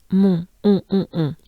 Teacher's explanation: here we have on, remember? On. It's very nasal.